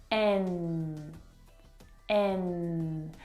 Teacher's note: It's at the top of your mouth, and the N sound is made back in the soft palate. It's a nasal sound.